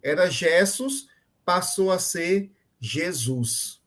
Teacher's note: Foi no caso da diástole, que é a deslocamento de um acento tônico de uma sílaba para a posterior